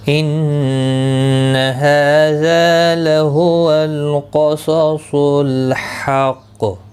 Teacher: وقف کی صورت میں قاف ساکن پڑھا جائے گا، اس پر قلقلہ بھی ہوگا. ملانے کی صورت میں قلقلہ نہیں ہوگا.